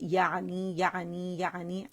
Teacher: عین جو ہے وسط الحلق سے واضح طور پر ہم ادا کریں گے